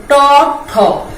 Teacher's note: দাঁতের যেই এই যে মাড়ি সামনের অংশটা, এই অংশটা এর মধ্যে উচ্চারণ হয় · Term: মূর্ধাধ্বনি